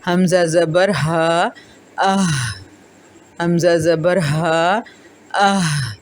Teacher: اقصی حلق سینے کی طرف والا حصہ ہے، منہ سے دور ہوتا ہے اور سینے کے قریب ہوتا ہے